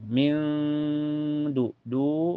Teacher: nun sukunnya disamarkan ke dal dan ditahan sampai terasa ke hidung. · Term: ikhfa hakiki